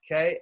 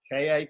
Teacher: less air so the difference between these two letters is that the k in the first one has less air the second one has more air